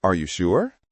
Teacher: A key here is to avoid uptalk, the tendency to tilt your words with an upward inflection at the end. It's a rising intonation, the kind you use when you're asking a question